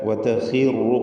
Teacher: ഖാഇന് കസ്റ ആയതുകൊണ്ട് കുറഞ്ഞ തഫ്ഖീം മതി. ഇസ്തിഅലാഇൻ്റെ ഹർഫാണ് ഖാ, എന്നാൽ കസ്റ നൽകപ്പെട്ടതിനാൽ ഏറ്റവും കുറഞ്ഞ തഫ്ഖീം.